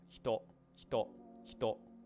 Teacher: when you say hito, you should only feel your voice vibrate, your throat vibrate when you're at the o there.